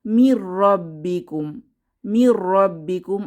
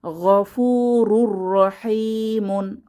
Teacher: লাম এবং র আসলে গুন্নাহ ছাড়া মিলিয়ে পড়তে হবে